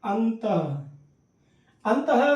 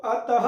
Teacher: तो ऐसा लग रहा है कि लास्ट में ह बोल रहे हैं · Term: विसर्ग